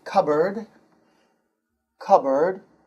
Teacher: It's pronounced k-a-b-r-d. So you don't pronounce the P in the middle.